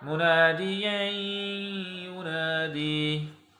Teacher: یعنی اگلے حرف کے ساتھ ملا کر پڑھا جا رہا ہے، تو یہاں پر غنّے کے ساتھ ادغام ہے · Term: ادغام بالغنّہ